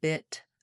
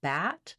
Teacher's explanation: between bit and bat, the tip of my tongue is getting more open. My jaw is also opening, but the back of my tongue is staying fairly high.